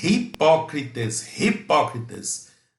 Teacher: Já no grego muda, é hipócritas, tá? Tem o áspero aí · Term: aspiração áspera